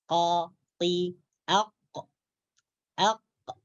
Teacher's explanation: Huruf qaf keluar daripada pangkal lidah menyentuh langit-langit daging, yaitu menyentuh langit-langit atas, menyentuh anak tekak.